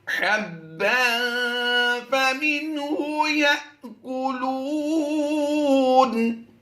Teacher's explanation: تنوین کے بعد فا حروف اخفا میں سے ہے، تو یہاں پر ہم غنہ کریں گے، یہ غنہ زمانی کہلائے گا